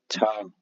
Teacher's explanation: तालव्य महाप्राण अघोष व्यंजन वर्ण का उदाहरण